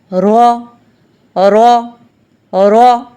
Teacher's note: را کو موٹا پڑھیں گے کیونکہ را کے اوپر زبر ہے، اس کو را نہیں پڑھیں گے، موٹا کر کے پڑھیں گے، را را را۔